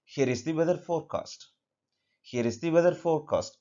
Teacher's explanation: here is the weather forecast. Here is the weather forecast. So here, especially the last word, it goes down.